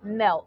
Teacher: We have an L before the T, and that sound ol is voiced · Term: stop T